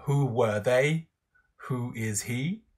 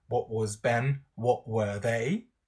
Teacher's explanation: you get falling intonation on the whole construct